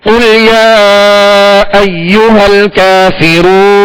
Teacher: اب اصل میں کافرون نون پر زبر ہے، جب وقف کیا تو کیا کیا ہم نے؟ ساکن کر دیا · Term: سکون عارضی